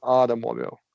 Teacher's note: And you can flap the T in automobile.